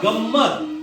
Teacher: गमत >> अनुस्वार या ठिकाणी कशावर आला >> ग वर >> म्हणजे या मचा उच्चार नाकामधून होत होता